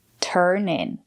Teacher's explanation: It's a phrasal verb. We stress both words, turn in.